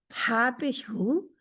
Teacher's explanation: ये हलक के दरमियान से यानी कि आपका गला जो है उसके दरमियान से आती है। · یہ حلق کے درمیان سے، یعنی کہ آپ کا گلا جو ہے اس کے درمیان سے آتی ہے، بیٹھے رہو ماجی، تسی بیٹھے رہو، حلق کے درمیان سے آتی ہے، اور جب حلق کے درمیان سے تھوڑی سی ایسے جیسے رگڑا سا کھاتی ہے، یعنی کہ فیل ہوتا ہے، आप रखें उंगलियां वहां पे तो फील होता है जब हम कह रहे होते हैं।